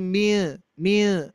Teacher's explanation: menyamarkan menutupi aslinya yang asalnya Min menjadi mie mie enggak jelas gitu ya itu ikhfa